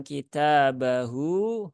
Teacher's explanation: Hunya dua harakat ini ada Mad Silah sugro atau mad Silah qasirah maka dibaca panjang dua harakat